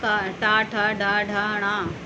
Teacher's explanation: इनकी जो आवाज़ निकलती है मूर्धा से निकलती है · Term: मूर्धन्य व्यंजन